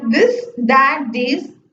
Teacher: lower lip the sounds f and v lingua dental that is tip of the tongue between upper and lower teeth